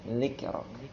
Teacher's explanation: Juga bedakan zal ya. Zalnya jangan terlalu tebal.